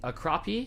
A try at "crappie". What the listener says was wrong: That's an A. that's an A, you guys. Yeah. That's an A. It doesn't make an aw sound. Wrong. You Midwesterners are pronouncing it incorrectly.